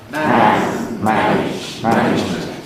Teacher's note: And therefore, because we've got more material to fit in, we have to squash everything up. We have to make the a long in man cuz it's got a whole word to occupy, single syllable. Not so long in manage cuz there's a age to come. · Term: rhythmic clipping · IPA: [mæn]